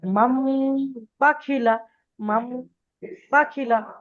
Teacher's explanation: ইকফার মত গুন্না করে পড়তে হবে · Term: ইগলাব